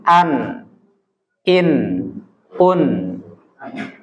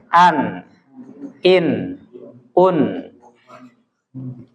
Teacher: memberikan dengung di dalam hidung. Suara menggema ya, suara dengung.